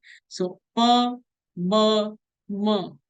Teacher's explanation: So bilabial sound means where the two lips are meeting.